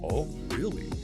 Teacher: Downward inflection, oh really, often shows mild surprise, perhaps skepticism